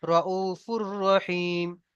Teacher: এখানে দেখেন রউফুর রহিম, এখানে দেখেন দু পেশ তানবিন এসেছে, তাই না? তানবিন, তানবিনের পরে র এসেছে, তাই একে বিনা গুন্নায় জাহির করে পড়বো। রউফুর, এমন ভাবে কেউ গণ্যা করবো না, রউফুর রহিম।